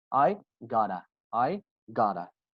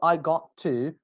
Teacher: when te becomes between two vowels, they sound as d sound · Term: American accent